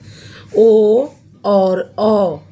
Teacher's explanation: ओ और औ का उच्चारण स्थान कंठ और ओष्ठ से होता है। इसलिए इन्हें कंठोष्ठ वर्ण कहते हैं।